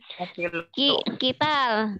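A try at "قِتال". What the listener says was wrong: Iya, panjang dikit dong. Hisab gitu. Hisab ini juga sinnya rada panjang.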